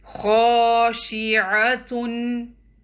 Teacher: So we're going to prolong letter kha up to 2 counts, and the remaining letters will be 1 count